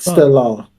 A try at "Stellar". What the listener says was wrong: You always forget the R.